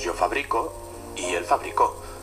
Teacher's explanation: se distinguen solo con el cambio de posición del acento